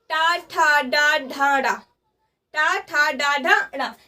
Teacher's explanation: किसे रखेंगे, मूर्धन्य में रखेंगे। ये हमारा मूर्धन्य, इसे टा वर्ग को बोलते हैं मूर्धन्य।